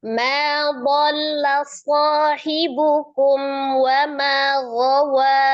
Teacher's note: Dhalla gitu ya lamnya tasdid saja, jangan ditahan. Tapi dia nyambung tawasud saja.